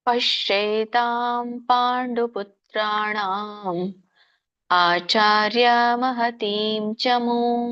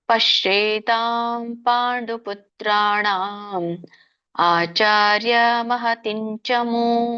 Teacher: ನಾನು ಕೇವಲ ಅನುನಾಸಿಕ ಸ್ವರದಲ್ಲಿ ಮಾತ್ರ ವ್ಯತ್ಯಾಸ ಮಾಡಿರುವಂತದ್ದು ಉಳಿದಿದೆಲ್ಲ ಸೇಮ್ ಇದೆ